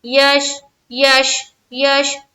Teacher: جزم ہے، تو شین میں اب ایسا نہ پڑھے کہ قلقلہ سمجھ میں آئے. شین قلقلہ والا حرف نہیں ہے، یہاں پر ہماری آواز رک جائے گی، یہاں پر ہماری آواز ٹکرانی نہیں چاہیے.